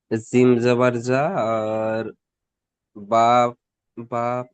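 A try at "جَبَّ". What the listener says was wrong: বাইরের পরে তাসদিদ আছে, বাটাকে কভার করতে হবে দুবার। একবার আগের সঙ্গে মিলিয়ে, তাহলে একবার আগের সঙ্গে মিলিয়ে পড়েন। বাটাকে যোগ করেন না।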